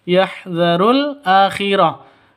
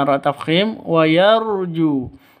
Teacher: ju panjang dua ketukan karena ada wau mati diawali dengan dommah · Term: mad asli